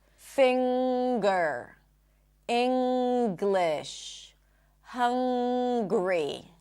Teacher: It's not that you pop the G, there is a G sound in addition to the Ng sound